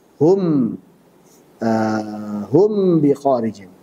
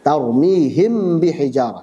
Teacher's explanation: kalau mim ketemu ba dibaca izhar berarti tidak dipanjangkan gunahnya. Hum bi kharijin, tidak dipanjangkan.